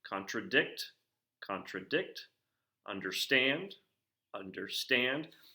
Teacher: a three syllable foot where the pattern is now going to be unstressed unstressed stressed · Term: anapestic